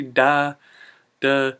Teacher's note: the word the you have to shorten that one too and you change the th to a d